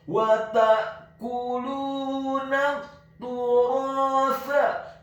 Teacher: huruf nunnya dibaca tipis, tarqiq fathah, cukup 1 harokat saja karena setelahnya langsung disambung ke huruf lam